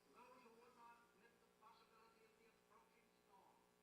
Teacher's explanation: his speech is non-rhotic. That is, he's going to not produce the R after a vowel.